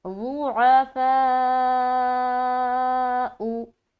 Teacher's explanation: تو یہاں پر ہم 3 سے 4 الف کھینچیں گے. تو ہم جب اس لفظ کو ادا کریں گے تو پڑھیں گے ضعفاء. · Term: مد متصل